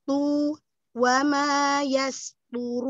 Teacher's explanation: Yas tu pokoknya tebalkan dengan mengangkat pangkal lidah.